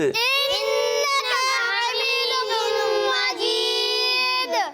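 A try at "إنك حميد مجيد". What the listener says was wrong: انک لمبا نہیں کریں, کاف کی زبر لمبی نہیں کریں گے, ٹھیک ہے. انک حمید, انک حمید مجید.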